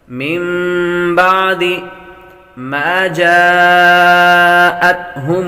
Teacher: حروف مدہ کے بعد حمزہ اسی کلمے آ جائے تو مد متصل ہوتی ہے، یہاں پر مد کریں گے۔